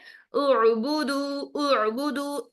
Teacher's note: sorry आइन को हमने देखा कि आइन एक नरम लेटर है आइन को साकिन हालत में अदा करते हुए आवाज को फ्लो की तरह चलाते हैं यानी आवाज जारी रहती है झटके से बंद नहीं होती है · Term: आइन साकिन